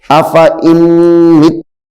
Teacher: اب دیکھیں اور کریں اس کے اوپر، حمزہ زبر آ، فا زبر فا، الف زائدہ، آفا، حمزہ نون میم زیر ان، حمزہ نون میم زیر ان، آفا ان، آفا ان، میم تا زیر مت، تا زبر تا، آفا ان متا، آفا ان متا، آفا ان متا۔ یہاں پہ غنہ اس لیے کیا جا رہا ہے کیونکہ یہ میم مشدد ہے